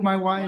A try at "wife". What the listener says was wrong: My wife, and be sure, wife, wife. Wife, you gotta get that F in there. Wife.